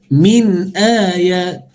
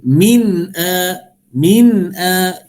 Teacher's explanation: nun mati ni dia ada sifat tawassut, min lepas sikit suara, dan juga al-jahar tahan nafas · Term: izhar halqi